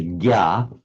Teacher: the Sanskrit jna, which in modern Hindi you pronounce as a gya